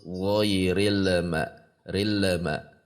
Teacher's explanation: tekan di titik lam tidak boleh dilepas sampai mengucapkan ma supaya menghindari memantul bagi Anda yang masih memantul tidak dilepas kalau dilepas nanti rilma tahan saja namun jangan dipanjangkan ghairil ma rilma tidak boleh juga untuk karena ditahan jadi rilma gitu karena sifatnya yang bainah.